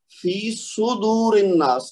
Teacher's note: صاد کو کوشش کر کے پیش کے ساتھ پڑھیں گے تو پھر یہ پیش نکلے گی، ورنہ زبر نکلے گی